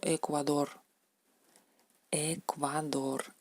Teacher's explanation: Esta letra en ruso se pronuncia igual que la E española, se pronuncia como la E española, E abierta, E natural española